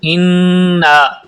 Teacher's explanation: انا یعنی آواز کو ناک میں لے جا کر پڑھیں گے، اور نا کے اوپر مد ہے جسے مد منفصل کہتے ہیں، اس لیے نا کو لمبا بھی کریں گے